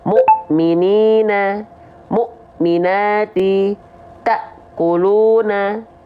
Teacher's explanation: kalau ada huruf atau ayat yang dia ada hamzah sukunnya, pasti dibacanya seperti terhenti atau terhentak